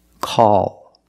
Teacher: After a vowel at the end of the word, we use the dark L,